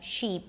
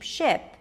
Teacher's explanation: The result, different vowel sounds sound the same. So, like, we have the tense E and the relaxed I in American English, sheep, ship.